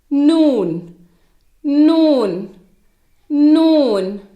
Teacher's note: இது நுனினாவில் இருந்தும் மேல்நடு பற்களில் வேரில் இருந்தும் உச்சரிக்கப்படுகிறது.